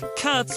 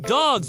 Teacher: Cats sounds like cats with an S sound. Dogs sounds like dogs with a Z sound.